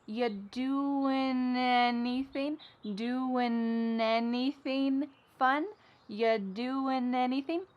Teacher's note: whatcha got going on or ya doing y you doing we're dropping that g again you doing anything fun something interesting happens at the beginning of the word anything you doing fun we link together doing because we're going to drop the g it ends with the sound n the n sound and then the next word anything, we sometimes drop the a and we're going to push those two together because there's two n sounds side by side.